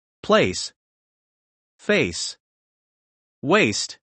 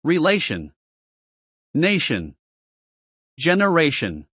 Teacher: A slender or close, is the peculiar a of the English language, resembling the sound of the French e masculine